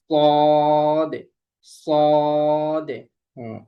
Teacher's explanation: জিহ্বার আগা সামনের নিচের দুই দাঁতের পেট ও আগার সঙ্গে লাগিয়ে উচ্চারিত হয় সদে